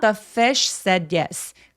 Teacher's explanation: sh는 입술 내밀고 s는 입술을 안 내밀거든요. 근데 바람은 계속해서 나오는 느낌을 살려 주시면 자연스럽습니다